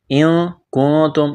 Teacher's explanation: اخفا کریں گے، نون ساکن کے بعد کاف ہے